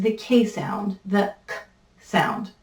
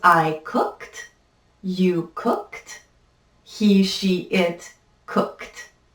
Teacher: last sound i'm making is the k sound the k sound this in english is what is referred to as a voiceless sound which means that my vocal cords do not vibrate when i make that sound